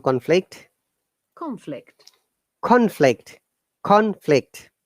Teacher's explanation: When it is noun, we must all stress on the first syllable